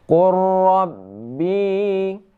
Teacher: Jadi qurrab seperti qaf ini bertasydid kepada ra, lam diidghamkan kepada ra ya, namun boleh juga dibaca idgham naqis yaitu sifat isti'la, qaf tetap ada ya, tetap ada. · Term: idgham mutaqarribain